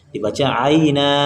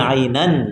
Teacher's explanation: tulisannya ainan dibaca aina kalau wakaf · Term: mad iwad